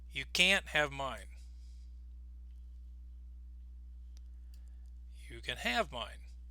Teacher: we do not stress the word can. We use the schwa and reduce the word. · we stress the most important word after the word can